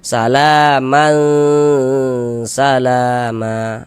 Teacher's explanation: kita samarkan bunyinya kemudian kita dengungkan sepanjang dua harakat. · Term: ikhfa hakiki